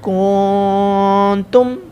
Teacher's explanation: نون ساکن کے بعد تا ہے، ان 8 حروف میں سے نہیں ہے، حروف اخفا میں سے ہے، گنہ کریں گے۔